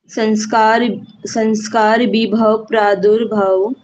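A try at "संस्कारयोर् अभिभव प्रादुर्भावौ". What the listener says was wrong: योर कहाँ गया?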